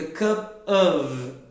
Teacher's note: Porque eu já junto cup com of e fica cup of, que é um schwa sound